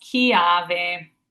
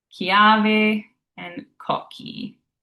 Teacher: But in Italian, a CH or double CH is always going to be a hard ka, like king in English.